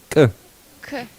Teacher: Нет, Х пропадает, но это К, но сказанное чуть-чуть с напряжением и резко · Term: абруптивный звук